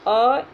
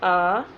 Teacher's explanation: अ की अपेक्षा आ बोलने में दोगुना समय लग रहा है। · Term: दीर्घ स्वर